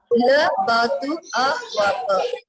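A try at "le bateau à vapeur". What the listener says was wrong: Try and practice your O. Like EAU has to be pronounced as alphabet O and not U.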